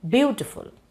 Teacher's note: there we do not accent full we say beautiful okay see it has three syllables we are accenting the first syllable and the second and third go unaccented